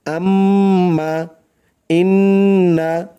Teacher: নাকের বাঁশি হইতে গুন্নাহ পড়া হয় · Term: ওয়াজিব গুন্না